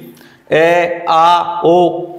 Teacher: अ आ ओ इनको कंठ से बोला जाता है